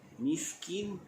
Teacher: Mil miskin, alif lam di situ menjadi alif lam qamariyah, bacaannya izhar. Miskin, mis huruf sin, pastikan dia berangin, jangan sampai berhamburan udara.